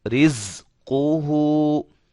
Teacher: سیٹی کی آواز پیدا ہوگی زا کے اندر